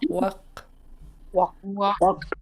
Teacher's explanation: The ending of the word is a short high A and then underline K. Underline K you pronounce in the back of your throat.